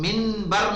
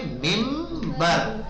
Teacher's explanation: بعد اگر با آتا ہے تو نون کو میم سے بدل دیتے ہیں. اقلاب کہتے ہیں بدلنے کو.